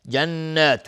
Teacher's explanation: نون مشدد دو حرکت غنه میدیم